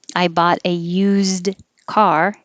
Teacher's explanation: I bought a used car, it will sound like a ZD. Oo is still the stressed vowel.